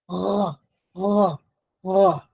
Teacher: that's the uvular trill, but it's not found in English. It's found in French.